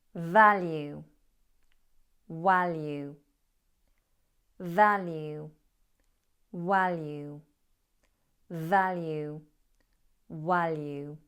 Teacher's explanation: Number 1, value, with a v, my teeth touching my bottom lip. V.